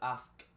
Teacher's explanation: Como termina con una K, la K se pronuncia con la garganta. Es un sonido muy débil, es un sonido voiceless, se llama, no usa las cuerdas vocales para ser pronunciado.